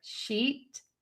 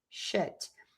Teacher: I am smiling. My cheeks are tense. Everything is kind of engaged and tense. That makes my tongue go nice and high in my mouth.